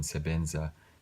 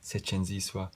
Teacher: passives and diminutives require that certain consonants become palatalized, so the B in sebenza becomes setshenziswa